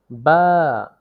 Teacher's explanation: দুই ঠোঁটের ভিজা জায়গা হইতে উচ্চারিত হয় বা